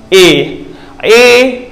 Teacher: जीव आगे बढ़ रही है